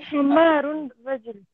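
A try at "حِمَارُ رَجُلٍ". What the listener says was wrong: So remember, himaru, that the hat has a kasra. We say himaru.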